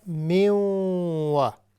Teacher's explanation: تنوین کے بعد واو ہے جو کہ یرملون میں سے ہے لہٰذا ہم یہاں پر ادغام کریں گے اور یہ ادغام مع الغنہ ہوگا یعنی غنے کے ساتھ